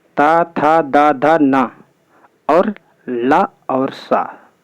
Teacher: जिनका उच्चारण करते समय जीवा ऊपर के दांतों के लगभग निचले हिस्से में स्पर्श करती है, उन्हें दंत व्यंजन कहते हैं।